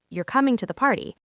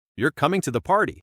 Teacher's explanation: If my voice goes down at the end, you're coming to the party. It's a statement. It sounds like I'm confirming a fact or maybe even a little surprised. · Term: falling intonation